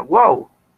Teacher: Entonces, por ejemplo, la voz miau es una sola sílaba, es monosílaba, miau, y tiene vocal cerrada, vocal abierta, vocal cerrada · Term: triptongo